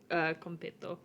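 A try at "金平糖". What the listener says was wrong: But the way you're pronouncing it, you're putting on like a slight Spanish accent.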